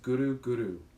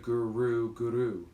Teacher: And when you chant along and pronounce the word Guru, we just ask that you pronounce it by using the tongue to the roof of the mouth at the back of the teeth, and you roll the R a little bit